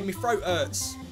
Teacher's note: THs become F sounds, throat. Ts are replaced by glottal Ts, and we don't use Hs because who needs them?